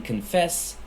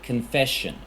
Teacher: The s in confess changes to sh in confession. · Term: consonant mutation